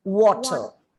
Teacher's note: you have to round your lips. You have to take the plosive T and the R is silent.